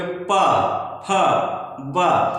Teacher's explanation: और फिर हम देखेंगे कि पा, तो जब हम बोलेंगे पा फा बा, तो यहाँ पे देखिए कि हमारे दोनों ओठ एक दूसरे से मिल रहे हैं। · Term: ओष्ठ ध्वनियां